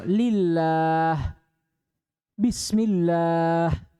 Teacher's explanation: Itu kalau apa yang sebelum lafaz jalal Allah itu dikasrah. Contoh lillah, bismillah, dibaca tipis. Jangan dibaca tebal. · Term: at-tarqiq